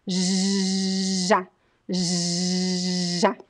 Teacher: It's a very strong sound, and all of the cords are vibrating when you pronounce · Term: voiced